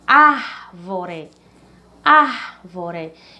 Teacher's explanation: Então, a sílaba ar, ela é a mais forte, certo?